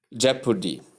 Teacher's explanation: your emphasis should be laid on the first syllable, which is jep, as you see above.